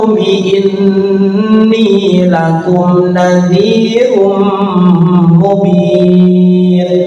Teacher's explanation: Lakum nadzi dya di ujung lidah nadzi panjang rum ketemu mim dibaca idgham bigunah. Dimasukkan kepada huruf mim dengan kunah ditahan